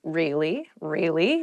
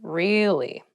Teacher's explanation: to show that you're not so interested in the conversation with downward intonation · you can use it to show you interested in a conversation with upward intonation